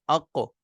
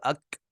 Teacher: قاف تھوڑا پیچھے سے نکل رہا ہے، اور کاف جو ہم پڑھیں گے وہ تھوڑا اس سے آگے سے نکلے گا، یعنی منہ کی طرف، آگے کی طرف۔ تو قاف کے مخرج سے ذرا آگے منہ کی طرف زبان کی جڑ اوپر تالو سے لگے تو کاف نکلتا ہے، ٹھیک ہے۔